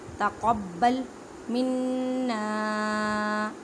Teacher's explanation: الف سے پہلے زبر ہے, مینس کے ایک الف کی مقدار میں کھینچ کر پڑھیں. تقبل منا نون مشدد گنہ کریں. گننے کا مطلب ہے آواز کو ناک میں لے کے جانا ایک الف کی مقدار میں